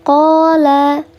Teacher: Ada alif sebelumnya harakatnya fathah namanya mad tabi'i. Dibaca panjang dua harakat.